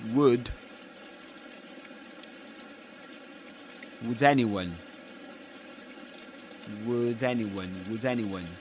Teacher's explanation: That's catenation, linking final consonants with initial vowel sounds.